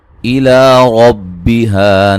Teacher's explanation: لا مد اصلی ہے، اور را کو موٹا ادا کریں گے